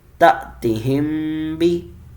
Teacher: میم ساکن پلس با گنہ ہوگا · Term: اخفاء شفوی